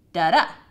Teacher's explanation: Now we've broken it up for you here into metrical feet called iambs, which has de-stress on the first syllable and stress on the second syllable